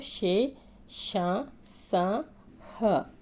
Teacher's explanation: వీటిని నోటితో ఊది పలుకుతాం మీరు పలికేటప్పుడు చూడండి గాలి బయటకు వస్తుంది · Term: ఊష్మాలు